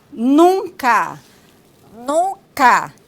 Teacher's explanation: produzindo as vogais com a passagem do ar tanto pelo trato oral quanto pelo trato nasal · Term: nasalização